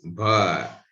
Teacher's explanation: Bha, bilabial, plosive, voiced.